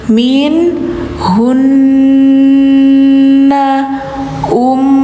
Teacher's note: Ini dengung-dengung nun sama mim yang tasydid hukumnya gunah musyaddadah. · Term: gunnah musyaddadah